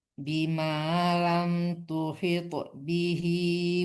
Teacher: pantulkan tonya ya, pantul qalqalah